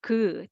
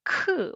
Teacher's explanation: And ㄱ is soft ㄱ sound, but this one is ㅋ with lots of air. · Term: aspirated consonant